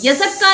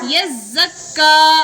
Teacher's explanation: दोनों हुरूफ जो आएंगे तशदीद वाले, दोनों को सख्ती के साथ पढ़ेंगे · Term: तशदीद मअत तशदीद